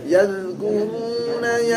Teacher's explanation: Ya, lidahnya sampai keluar ya. Ujung lidah nempel di ujung gigi yang atas.